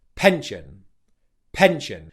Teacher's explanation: Stress on the first syllable and the second syllable is unstressed.